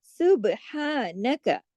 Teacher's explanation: बा पे कलकला होगा, हाँ पे खड़ी जबर है, तो उसको अलिफ के बराबर सुब्हानक खींचेंगे।